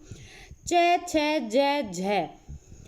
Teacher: मुंह के भीतर जो ऊपर वाला पार्ट है उसके पिछले भाग से आ रही है